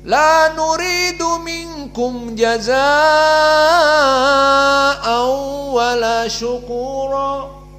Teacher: qiraah Wars an Nafi' al-isba dikenyangkan